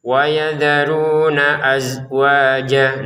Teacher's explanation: Ini zainya jangan dipantulkan.